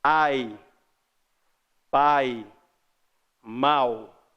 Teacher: O a é mais forte que o i na primeira, que o i na segunda e que o u na terceira. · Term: ditongo decrescente